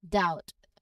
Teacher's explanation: No, with clear diphthong ow in this word. Now you don't hear a B sound in there at all. So for the letter B, the key is to watch out for it late after an M at the end of the word or before a T.